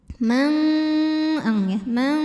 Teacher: suara yang masuk hidung lebih banyak dibandingkan dengan suara yang aliran suara dari mulut · nun sukun yang menghadapi huruf Kaf maka nunnya dibunyikan samar-samar jadi kita siap-siap menuju makhraj huruf Kaf yaitu ke Pangkal lidah ya disertai ada bunyi dengungannya nah ini bunyi dengungannya besar karena kita siap-siapnya jauh ke belakang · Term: ikhfa ab'ad, hukum ikhfa ab'ad